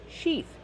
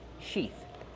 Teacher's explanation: Use the long E sound like green beans, she, plus the TH with no voice, like in thank you and think.